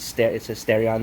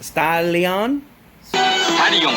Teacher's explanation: In the Japanese language, there's no L, I guess you could say. There's no L sound, so they substitute the L's with R's. So it's it's actually pronounced Stalion.